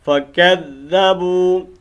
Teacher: اب اس با کو تھوڑا ہم نے لمبا کرنا ہے چونکہ واو مد ہے